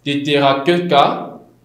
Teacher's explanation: La consonne initiale perd son aspiration. C'est-à-dire qu'on n'aura pas, on n'a pas commencé avec le teta, mais plutôt avec le to.